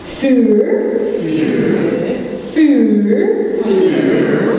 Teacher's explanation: Yeah, and you roll the R's. They're kind of like the Spanish R's.